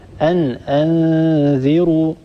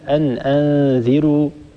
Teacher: فقط انتبهي لكلمة أن أنذروا، الراء هنا مضمومة، الراء مفخمة، لا نترك هذه الراء المضمومة تتأثر بجارتها الذال المكسورة، لا نترك الذال المكسورة تسحب صوت الراء إلى أسفل، نقول أن أنذروا ولا نقول أن أنذروا، ننتبه لا نرقق هذه الراء.